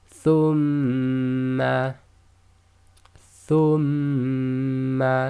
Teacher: So instead of just saying thumma, when you recite this you'll do thumma, thumma. So you keep your lips closed and vibrate the sound or hum the sound in your nose. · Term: nasalization, ghunna